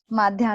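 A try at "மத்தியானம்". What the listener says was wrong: We don't have that dya, we say Madhyanam. Like we don't have the conjunctives like to join.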